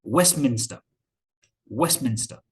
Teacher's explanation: in the middle of other consonants so for example west minster we don't usually pronounce the t the t is uh omitted elided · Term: elision